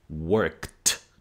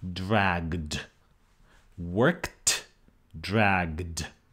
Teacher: The environment in English is being surrounded by a voiceless consonant, by a consonant without the vocal cords being active, where the vocal cords are not vibrating. So the K is voiceless, and it triggers a devoicing of the past tense. So what you actually get in the spectrogram is a T, worked.